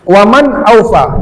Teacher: nun sukun bertemu hamzah izhar, dibaca jelas nun sukunnya dengan ada guna.